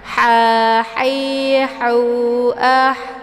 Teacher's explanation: Haun ini merupakan ha kecil. Dia keluarnya dari tenggorokan bagian tengah. Ha hi ha. Jadi biasa juga dikenal dengan ha pedas karena ada keluar suara kepedasan dari kerongkongan.